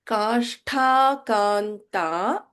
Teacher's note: Here we have Sh and Mahaprana Tha.